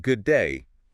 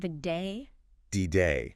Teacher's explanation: think about good day it sounds like just one word